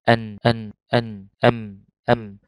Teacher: تعريف الغنة: هي صوت يخرج من التجويف الأنفي الذي يسمى بالخيشوم، ويصاحب في اللغة العربية حرفي النون والميم مهما كان وضعهما، ويختلف طول زمنه باختلاف الحكم، بمعنى أن الغنة هي صفة، لازمة لحرف النون والميم.